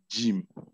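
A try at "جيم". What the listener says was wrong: No, Jeem. Say it long. Make it long. There's a ya, and ya is used for elongation. Jeem.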